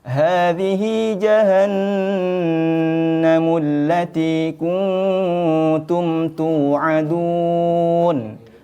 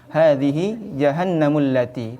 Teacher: jadi ketika kita membaca jahanam itu tidak langsung Hadi jahanam tapi harus didengungkan masuk dengan dengung harus ditahan ditekan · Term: gunna musyaddadah